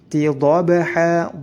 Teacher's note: Wal 'adiyati, ya-nya juga harus panjang dua harakat, sama-sama disebut mad tabi'i. Tidhabha, ba-nya dipantulkan karena memiliki sifat qalqalah